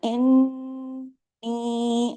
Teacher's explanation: نون پہ تشدید ہے نا، ڈبل نون ہے، تو اس کو آپ نے بڑا غنہ کرنا ہے، انی۔ اب دیکھیے نی کی بھی آواز کو کھینچنا ہے، کیونکہ اوپر دیکھیے مد بھی ہے، تو اس کا حق بھی ادا کرنا ہے، لیکن یہ تمام باریک حروف ہیں۔